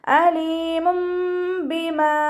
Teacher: തൻവീനിനെ മീം ആക്കി മാറ്റി മറിച്ച് ഉന്നയോടുകൂടി ഓതി കൊടുക്കുട്ടോ നല്ലോണം മണിച്ചച് ഓതികൊടുക്കുക അലീമുംബിമ അപ്പ അവിടെ തെൻവീനിലുള്ള നൂനിന്റെ സൗണ്ടിനെ കേൾക്കുകയില്ല അതിനെ